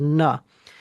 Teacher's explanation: I'm putting air through the nasal cavity, and then it becomes na. And also, that's where the ing comes in, because instead of saying a ka, what I'm doing is I'm adding the nasal component, and ka becomes the ing sound.